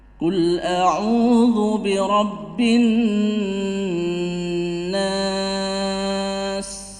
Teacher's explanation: Karena di situ ada mad tabi'i bertemu dengan huruf hidup, yaitu di sini adalah kebetulan huruf sin dibaca mati karena waqaf, karena berhenti. Maka panjangnya itu bisa sampai 4 ketukan. · Nah, sedangkan di sini bi rabbin nas, an-nas itu alif lam syamsiyah karena ada tasydid. Dan nun tasydid sendiri di sini adalah gunnah. Gunnah yang asli. Jadi panjangnya lebih panjang daripada idgham bi gunnah. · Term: mad arid lisukun